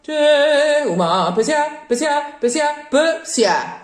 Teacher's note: all of the final consonants of every syllable, they're not supposed to be pronounced, turn into breaths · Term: No final N